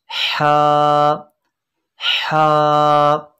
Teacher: हलक के दरमियान वाले हिस्से से यानी वस्ते हल्क